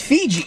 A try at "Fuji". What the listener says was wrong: Motherfucker, it's a U. It's not It's Fuji!